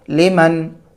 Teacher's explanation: نون ساکن کے بعد خا حروف حلقی میں سے ہے، نون ساکن کی آواز کو ظاہر کر کے بلا غنہ کے جلد پڑھیں گے